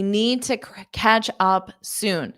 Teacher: I'm actually really dropping the D sound but I am pronouncing that t sound